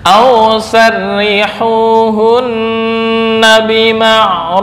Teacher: Ra berharokat kasrah dibaca tarkik. Aw sarri, sarri bukan sarri, beda.